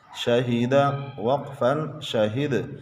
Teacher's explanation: دال حروف قلقلہ میں سے ہے، وقف میں ساکن ہے، اس پر قلقلہ کیا۔